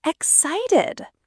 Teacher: Excited ex-cited. Stress on site.